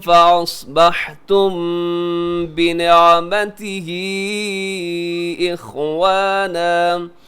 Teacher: قلوبکم فأصبحتم بنعمته اخوانا، فأصبحتم کے آخر میں میم ساکن ہے، میم ساکن کے بعد با ہے تو یہاں اخفا شفی کیجیے گا